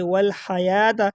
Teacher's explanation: یا کے اوپر آپ کو کڑا زبر نظر آ رہا ہے، اس کو ایک الف کے برابر کھینچا جائے گا